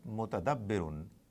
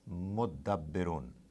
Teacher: This ta gets attached to the. They merge and they give the sound of two dals.